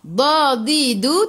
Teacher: tepi lidah menyentuh gigi geraham atas